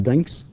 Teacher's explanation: ك as I said earlier is voiceless وتنطق الاس okay في النهاية